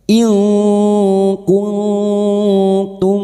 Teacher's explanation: kita samarkan bunyi nun sukun dan mendengung selama tiga harakat